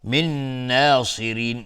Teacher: من ناصرین، نون ساکن باش نون ادغام با غنه. صاد از حروف استعلاء غلیظ تلفظ میشه. را ترقیق از حکمش چون کسره داره.